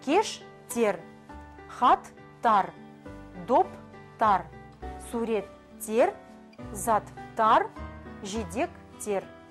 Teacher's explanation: окончание множественного числа тар тер добавляется после глухих согласных